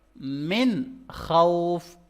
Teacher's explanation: Clear کر کے پڑھیں گے، ظاہر کر کے پڑھیں گے اس نون کو. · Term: اظہار